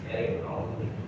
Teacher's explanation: Nah, mimnya itu dengungkan, didengungkan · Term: Hunah